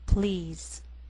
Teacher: the first is one syllable and the pl L blend together